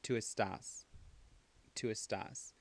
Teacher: So the only thing that's irregular is that the second syllable is accented.